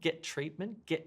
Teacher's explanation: we've got 2 t sounds, so we delete one, get treatment, delete the first one in fact.